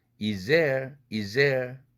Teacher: z 다음에 드가 올 경우 z로 바뀌죠. 드가 어려우니까. 그런 다음에 z가 겹치니까 하나로만 발음하죠. 그렇게 되면 is there도 is there 이렇게 되죠.